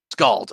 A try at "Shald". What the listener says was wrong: No, it's it's pronounced like scald, except with an SH instead of an SC.